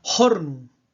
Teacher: la aspiración de la F inicial del latín, una H aspirada